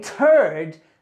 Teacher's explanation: when I say turd there's a little explosion heard